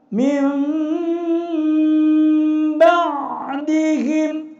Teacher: Nun mati maupun tanwin akan dibalik, suaranya menyerupai mim, sehingga di dalam ayat-ayat suci Al-Quran ada simbol huruf mim kecil. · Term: iqlab